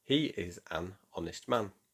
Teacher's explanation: The H in honest is silent, so it starts with a vowel sound.